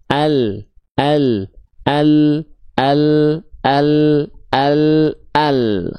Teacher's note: Sehingga kalau kita lihat overview-nya dari angle yang seperti ini, lam itu dilafakkan begini. Tepi lidah bagian depan kanan dan kiri keduanya menyusur sampai ke ujung lidah disentuhkan ke langit-langit bagian depan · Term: huruf lam